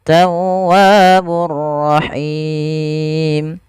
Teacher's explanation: panjangnya kita boleh memanjangkan dua harakat boleh pula empat harakat